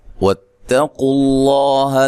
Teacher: تا کو باریک پڑھنا ہے، قاف کو موٹا ادا کرنا ہے. لفظ اللہ کو موٹا ادا کرنا ہے، اس سے پہلے پیش ہے